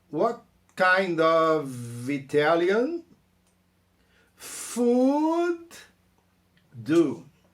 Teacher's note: Então repara, what kind of... Esse som do V do of dá para juntar com Italian.